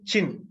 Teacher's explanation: you block complete closure is there but the release of this air is very gradual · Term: affricates